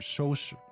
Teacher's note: that's first tone and neutral tone